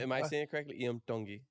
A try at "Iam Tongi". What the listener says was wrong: Kind of too much D. Too much D. Iam Tongi.